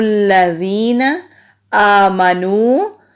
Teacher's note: حمزہ کے اوپر کھڑی زبر ہے، ایک الف کے برابر لمبا کریں گے۔